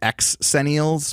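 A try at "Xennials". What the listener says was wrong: It's also not how you pronounce words that start with an X.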